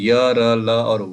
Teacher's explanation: इनका उच्चारण जो है वो व्यंजन और स्वरों के बीच का लगता है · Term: अंतस्थ